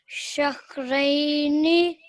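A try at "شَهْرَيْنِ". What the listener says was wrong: ये रा पर फतह है, इसलिए जरा इसको पुर करके शहरैनी, रैनी की बजाय शहरैनी।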